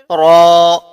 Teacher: را کی بھی جو آواز ہے آپ یہاں پر پر کریے، یعنی اسے موٹا پڑھیے